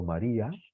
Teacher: ¿Veis cómo la I es la que tiene más fuerza?